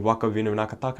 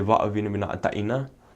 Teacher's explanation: And one of the dialects I learned, you drop the K for all words, and then some words you just change it up a little bit.